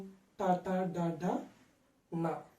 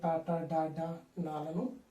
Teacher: ఈ యొక్క నాలుక చివరి భాగం పైన ఒక చోట టచ్ అవుతుంది కాబట్టి దాన్ని మూర్ధము అంటాం. కాబట్టి మూర్ధన్యములు అని టాటా డాడా నాలను వ్యవహరిస్తాము.